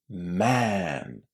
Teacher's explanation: This vowel sound is like a transition between a and e.